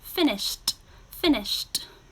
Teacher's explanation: your final sound is sh, so we add a t.